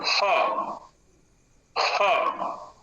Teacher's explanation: स्थान की दृष्टि से ह कंठ पर है